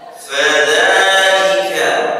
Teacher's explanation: dza panjang, dua ketukan, mad tabi'i